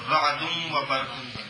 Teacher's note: نون تنوین کے بعد واو ہے تو نون تنوین کو واو کریں گے، واو کا واو میں ادغام کریں گے